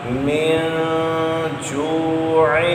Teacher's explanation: من جوع، اس کو آپ نے من جوع نہیں پڑھنا، کیونکہ نون ساکن کے بعد اخفاء حرف میں سے جیم ہے، غنہ کرنا ہے